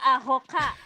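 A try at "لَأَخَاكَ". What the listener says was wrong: Kok sama ha ketuker melulu. La akhoka, nggak apa-apa nih, tenang aja.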